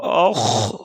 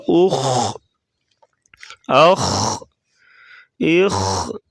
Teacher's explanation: خا کو پر پڑھیں گے موٹا